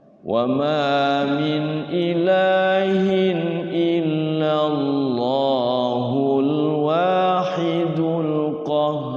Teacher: Kalau wakaf di situ. Tapi kalau diwasal illallahnya dua harakat aja. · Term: 2 harokat